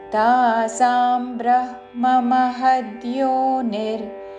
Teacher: బ్రహ్మ ముందు హా పలికి తర్వాత మ